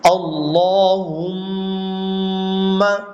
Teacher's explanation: ناک میں آواز چھپائی جا رہی ہے. تو یہ غننے کا ایک طریقہ ہے. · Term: غنہ